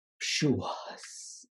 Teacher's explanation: It's very breathy, right?